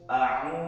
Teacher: a'u itu mad tobi'i, maka kita cara membacanya adalah 1 alif atau 2 harakat.